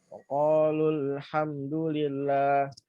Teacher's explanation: Cara bacanya yaitu dihilangkan ya. Hilangkannya wawunya.